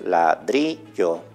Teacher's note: En este caso, el ejemplo que tenemos ahí no tiene acento ortográfico, su acento es prosódico. La palabra es ladrillo, es decir, se eleva en la penúltima sílaba.